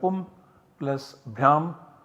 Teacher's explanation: this ma coming at the end of the pada is substituted by an anuswara. So we have pum plus bhyam as the output generated by the application of the sutra monoswaraha.